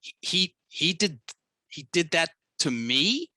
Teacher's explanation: She said it clunky and with uptalk, where it goes up as a question.